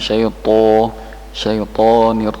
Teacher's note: To sama ro isti'ala, jadi harus diangkat pangkal lidahnya